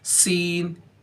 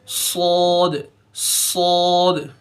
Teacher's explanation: देखो सीन और सौद दोनों सेम ही है, फ़र्क इतना है सौद को थोड़ा सा पुर पढ़ना है, मोटा पढ़ना है